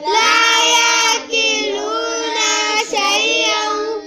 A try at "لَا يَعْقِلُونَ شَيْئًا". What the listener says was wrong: نون کو لمبا نہیں کرنا لا يعقلون شيئا لا يعقلون شيئا